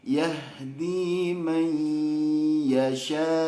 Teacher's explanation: Setelah selesai 3 ketukan, ke ya-nya itu baru dilepas hidungnya. Suara hidungnya dilepas. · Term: idgham bi gunnah